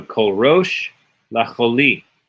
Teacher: Anytime you see it, just pronounce it kol. Kol rosh. The accent is on the rosh.